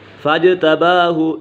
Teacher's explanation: فاجتباہ، جیم کے اوپر کلکلا ہو رہا ہے